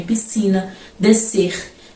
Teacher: tem s c mas dificilmente pronunciamos o s nessas palavras